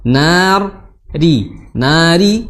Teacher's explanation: makhrajnya di ujung lidah, ya, di ujung lidah, namun posisinya seperti ini, ya.